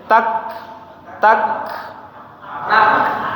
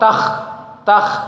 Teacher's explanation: ditambah bunyi ketika lidah dengan langit-langit mulut itu lepas, keluar suara hamsnya, tak, tak, ya sedikit ya, jangan terlalu banyak. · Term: sifat hams